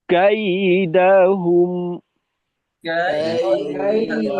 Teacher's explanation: হুম মিমে আওয়াজটা একটু রাখবো সাথে সাথে বন্ধ হবে না যেহেতু এখানে তাওয়াসুদের হরফ আওয়াজকে আমাদের চালু রাখতে হবে মধ্যম ভাবে